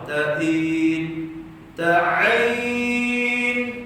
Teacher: Ta'in, ta'in, tekan itu pertengahan kerongkong.